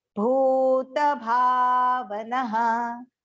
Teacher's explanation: The bha has to go long and the bhu has to go long.